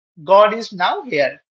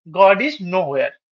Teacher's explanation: একটা ডাব্লিউ পরে পজ নেওয়া আর তার আগে পজ নেওয়ার মধ্যে পুরো বাক্যের অর্থ বদলে গেল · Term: বিষমচ্ছেদ